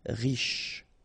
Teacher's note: final E not really pronounced, so sh is the last sound